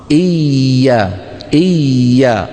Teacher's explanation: هل انقطع صوت الياء ما انقطع لانها رخوه ليست من حروف اجد خط بكت حتى تكون شديده وليست من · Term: رخوه مشدده